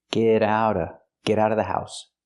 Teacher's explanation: We hear the T in get and the T in out pronounced as fast D's.